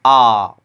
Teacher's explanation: आ, क्या हो रहा है? हमारा मुख पूरा खुल रहा है। तो विवृत में कुल एक ही स्वर होते हैं।